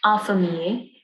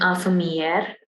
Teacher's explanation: You do not give emphasis to the R in infirmier, but in infirmière, you do.